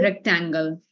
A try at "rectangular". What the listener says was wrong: Rectangular. We have A and R at the end, right? So it's rectangular.